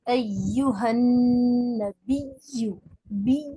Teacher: تجدید نون پر ہوگی تو غنہ بھی ہوگا. غنہ مینس ناک میں آواز کو روکیں گے.